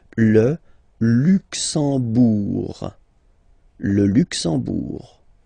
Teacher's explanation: You don't pronounce the M at all, it's this nasal en, okay?